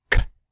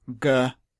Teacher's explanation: Voiced just means to make a vibration, a buzz, in the vocal cords. So the sound k is unvoiced, whereas g is voiced.